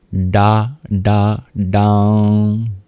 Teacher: For the bija, the seed itself, you curl your tongue back to pronounce it.